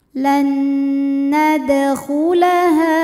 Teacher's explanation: Kemudian ada hukum qalqalah sughra karena ada huruf qalqalah yang sukunnya asli dan ada di tengah bacaan. Maka dibaca dipantulkan dengan pantulan yang kecil.